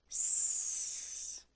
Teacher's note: There's no moving. That means we're not using our voice to make that sound. We're just blowing air like this. My tongue lifts up a little bit. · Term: S sound